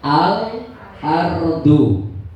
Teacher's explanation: Kalau alqamariah bunyi L-nya tidak hilang ya. L-nya masih tetap.